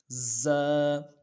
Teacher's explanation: اس کی سیٹی کرن کی شکل کی نکلے گی، ایسی کرن کی شکل کی سیٹی نکلے گی۔ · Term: سیٹی والا حرف